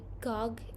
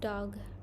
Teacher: And then the next one is baking, substituting a sound produced toward the back of the mouth for a sound produced in a more anterior position. So, for example, they say gog instead of dog.